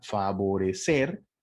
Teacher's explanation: explico ahora esta palabra favorecer la sílaba tónica se encuentra en la última sílaba